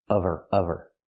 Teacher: Because there's no consonant, we need the V sound.